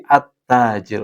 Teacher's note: bukan alta, tapi at-tajiru yang benar. Karena ini masuknya alif lam syamsiyah.